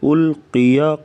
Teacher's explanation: قاف کو پر پڑھیں گے موٹا